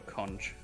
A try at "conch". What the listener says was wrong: It's pronounced conk. Oh, those funny words where CH is just k. Like cavern.